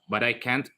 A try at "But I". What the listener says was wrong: Badai. Bukan badai I. Dua kali I itu. But I, coba badai.